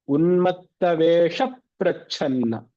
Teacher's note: If you remember from one of the rules that we spoke about was, whenever there is a samyuktakshara, a conjunct letter like pra, before a short vowel like vesha, and then pra. So you emphasize that consonant a lot.